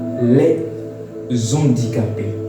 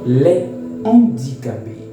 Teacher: le H de ce nom est aspiré il faut donc dire les handicapé sans faire de liaison